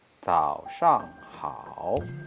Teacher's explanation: And we should pay attention to the pinyin, 自熬早, falling then rising tones, and 上 falling tones, 好 falling and rising tones.